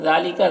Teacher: ذال میں کھڑا زبر ہے، اسے ایک الف کے برابر کھینچیں گے، باقی سب کو جلدی پڑھیں گے.